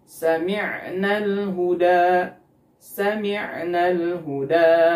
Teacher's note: ketika mengucapkan mimnya bunyinya tidak sempurna keluar karena hidungnya tertutup